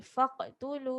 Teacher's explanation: jangan lupa untuk qalqalah pada faq. Qaf baris mati.